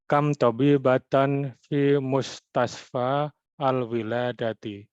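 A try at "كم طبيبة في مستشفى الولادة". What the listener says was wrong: Y, itu karena idhofah dilangsungkan saja. Fi mustasfal wiladati.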